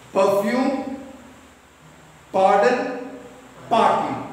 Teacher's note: the correct pronunciation is r is silent